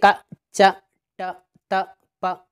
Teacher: इनका उच्चारण करते हैं तो ह का जैसी ध्वनि नहीं निकलती है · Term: अल्प प्राण